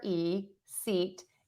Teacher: it's very close, smiling for E, seat, and my tongue is super high